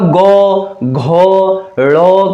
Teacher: अगर मैं ग, घ, ड़ कहूं तो कहीं ना कहीं आप देखेंगे जो स्वर तंत्रियां होती हैं उसमें कंपन होती है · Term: घोष